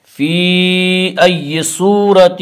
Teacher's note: صورت صاد کو پر پڑھا جائے گا، صاد حروف مستعلیہ میں سے ہے، حروف مستعلیہ 7 ہیں جن کا مجموعہ خصہ ضغط نقض ہے، جو ہمیشہ ہر حال میں پر پڑھی جاتی ہیں۔